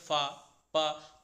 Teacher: प फ जब आप बोलते हैं तो इनको बोलने में आपको प्राय ऐसा लगता है जैसे आधा विसर्ग का उच्चारण हो रहा है। आप बोलेंगे फ प तो इसको बोलने में आधा विसर्ग उच्चारित होता है और इसी आधे विसर्ग को ही उपद्माय बोलते हैं। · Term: उपद्मानीय